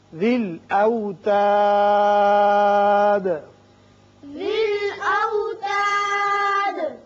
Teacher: یہاں جب ہم نے وقف کیا تو دال ساکن ہو گئی اور اس کی صفت قلقلہ ادا کی